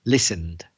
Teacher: Don't be tempted to pronounce ED, that E. The E is silent, so listened. Don't add an extra syllable.